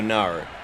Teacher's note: what they do is they add the R to the word no, so they go nar